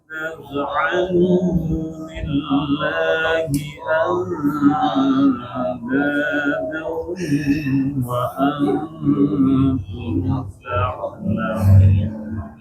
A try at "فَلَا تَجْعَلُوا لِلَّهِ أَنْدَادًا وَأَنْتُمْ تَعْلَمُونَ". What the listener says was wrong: Baik, yang pertama setiap huruf lam bertasydid jangan dipanjangkan ya. Karena itu bukan mada. Lillah. Tapi jangan lillah, tapi lillah.